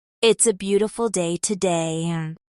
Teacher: So even in simple statements there's usually a slight rise and fall for x ample. It's a beautiful day today rises slightly on beautiful and falls on today.